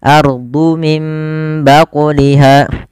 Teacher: Cara membacanya mengganti suara nunnya menjadi suara mim dan ditahan. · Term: iklab